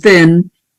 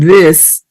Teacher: We have the voiceless and thin, and the voiced and this.